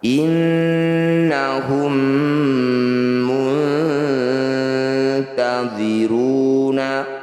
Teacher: Mim sukun bertemu mim disebut bacaan idgham mimmi atau idgham mitsli. Bunyi mim pertama masukkan pada mim kedua, dengungkan 2 harokat.